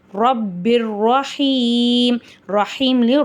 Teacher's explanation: மீம் வருது இந்த இடத்துல நம்ம குன்னா செஞ்சு ஓதணும் கௌலம் ரப்பிர் ரப்பிர்ல ரா மேல ஜபர் இருக்கு நம்ம வந்து ராவ வல்லினமா ஓதணும்